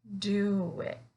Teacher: do and it, we're gonna connect them together with the w in between. So do it.